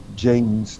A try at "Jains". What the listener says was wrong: Okay, so you're saying Gene, not Jane. Gene, that English accent, dude.